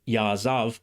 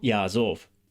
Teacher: Also note that biblical Hebrew had a slightly different verb form here, ya'azav, with an a vowel rather than an o vowel, because it's a special form used before a pause. Modern Hebrew doesn't have this, so it uses the usual form ya'azov.